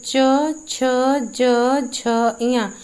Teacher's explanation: मुंह के भीतर जो ऊपरी छत होती है उसका आगे का हिस्सा, जो भी ध्वनि निकलती है, जो भी हम व्यंजन बोलते हैं, जैसे च, छ, ज, झ, इया, इसमें क्या है, हम जीभ से ऊपर का हिस्सा टच करते हैं, तो ये हो जाता है तालव्य।